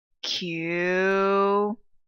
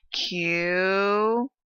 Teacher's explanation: I say with a fall and rise in my tone. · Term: third tone